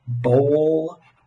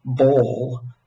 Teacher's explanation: differences between words like bowl with the goat vowel and bowl uh with the foot vowels